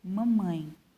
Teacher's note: ditongo nasal, mamãe. Por que nasal? Porque o som sai pelo nariz.